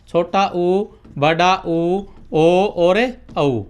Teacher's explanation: इनको बोलते समय हमारे होठ क्या हो जाते हैं? गोल हो जाते हैं। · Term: ओष्ठ